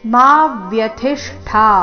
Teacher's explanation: ಮಾ ದೀರ್ಘ ಬಂದು ಅದರ ಮೇಲೆ ಆಘಾತ ವ್ಯಥಿಷ್ಠ ನಲ್ಲಿ ಥಿ ರಸ್ವ ಮಹಾಪ್ರಾಣ ಅದರ ಮೇಲೆ ಆಘಾತ ಮುಂದೆ ಅರ್ಧ ಮೂರ್ಧನ್ಯ